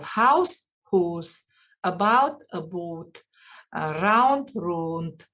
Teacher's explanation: they pronounce u instead of ow sound · Words like house, about, round are pronounced oo, for example, house, whose, about, boot, round, round, etc. They pronounce oo instead of ow sound.